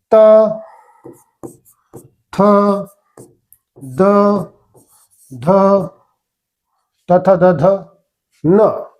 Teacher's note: काय ज्यावेळेस आपण बोलतो तर जीभ कुठे लागते दाताला लागत असते जीभ ज्यावेळेस दाताला लागते त्याला दंत्य म्हणतो